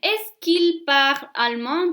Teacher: Two vowels together. So the que loses his E.